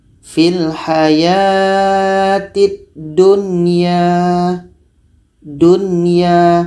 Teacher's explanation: Izhar tadi jelas. Jadi nunnya jelas, ia pun jelas. Dunya dan tidak ada dengung.